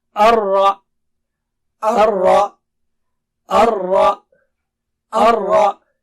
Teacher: Ra should be thick here and Ha sound should be clear.